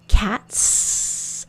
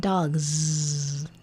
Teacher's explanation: If I put an S on the word dog, I get dogs. Did you see what happened? The S sounded like a Z. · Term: Z sound